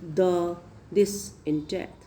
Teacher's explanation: The tip and blade of the tongue is coming in contact with the back of the upper teeth.